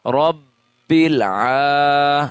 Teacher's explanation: اس کو ایک الف کے برابر کھینچ کے پڑھیں گے